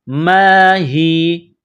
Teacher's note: ما ہی جب سٹاپ کریں گے تو یا کو سائلنٹ کریں گے